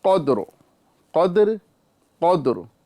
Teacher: र को बारीक नहीं बल्कि पुर करेंगे